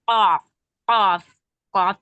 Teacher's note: یہ زبان کی جڑ اٹھ کر اوپر کے نرم تالو سے لگ جاتا ہے تب قاف ادا ہوتا ہے